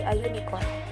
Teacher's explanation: In the second example, the article a is used because the U in the unicorn has the sound of the consonant Y, as in yell